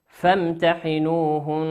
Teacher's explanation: والنون مشددة في كلمة فامتحنوهن تغن بمقدار حركتين